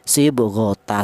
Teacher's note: Huruf apapun ya, huruf apapun yang berada di akhir kalimah keadaan wakaf dan bertanwin fathah itu dibaca mad iwat. Artinya tanwinnya diganti dengan fathah biasa dan dipanjangkan satu alif atau seperti mad thai.